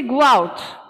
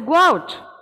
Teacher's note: so there is a linking w sound so between the go and out there is a linking sound it's just to make that transition smooth yes when we are